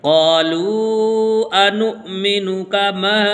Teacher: آمن الناس قالوا انؤمن کما، یہاں پر ہم غلطی یہ کرتے ہیں کہ نون کو واو کے ساتھ ملا دیتے ہیں، جبکہ واو کے ساتھ نہیں ملانا بلکہ نون کو حمزہ کے ساتھ ملا کے پڑھنا ہے، اور واو یہاں پر سائلنٹ ہوگا اور حمزہ جب بھی آئے گا تو اس کے اندر جھٹکا لگتا ہے۔